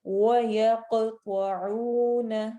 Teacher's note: قاف پہ ہم آواز کو ہلائیں گے. وہ موٹے حروف میں سے ہے.